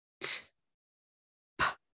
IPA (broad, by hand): t, p